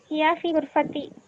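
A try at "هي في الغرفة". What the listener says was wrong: Okay, correct.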